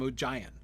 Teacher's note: if you're going to pronounce it with a soft G, I feel like you almost have to stress the second syllable, right? Which is indeed how Rob Inglis does it in the audiobook.